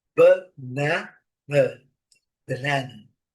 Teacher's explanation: a sílaba forte é a segunda